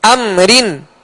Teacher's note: اب ہم نے را کو باریک پڑھنے کی جو صورتیں پڑھی تھی کہ را کے نیچے زیر ہو یا را کے نیچے دو زیر کی تنوین ہو تو را کو باریک پڑھیں گے، لہذا اس را کو بھی باریک پڑھیں گے اس لیے کہ را کے نیچے دو زیر ہیں